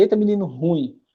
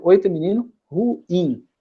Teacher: Colocando ênfase no IN, tá certo?